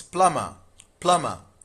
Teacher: In plumber B is silent. It is pronounced as plumber.